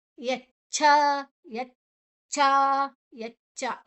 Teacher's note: ಇಲ್ಲಿ ಎರಡು ಕೂಡ ಅಲ್ಪ ಪ್ರಾಣ, ಇಲ್ಲಿ ಮಹಾಪ್ರಾಣ ಇಲ್ಲ, ಅಡಿವತ್ತು ಮಹಾಪ್ರಾಣ ಅಲ್ಲ ಅದು.